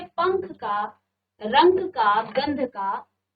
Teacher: इनका उच्चारण करते समय वायु आपके सिर्फ और सिर्फ नाक से ही बाहर आएगी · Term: अनुस्वार